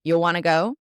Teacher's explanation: I've lost the word do.